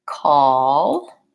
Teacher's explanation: sound foul aw and an L but kind of in here before the L I have a little bit of another sound which I think of as being kind of an up sound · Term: hidden extra sound